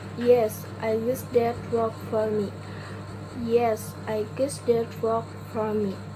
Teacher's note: The t sound right after s sound, so it can be dropped.